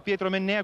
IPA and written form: ˈpjɛːtro menˈnɛːa (Pietro Mennea)